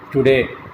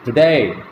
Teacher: Generally, the non-native speakers, many of the non-native speakers, they pronounce this word in the same manner, today. But here, the second syllable day is stressed. The first syllable is unstressed. So we utter the second syllable with greater breath force. We utter the second syllable loudly, today.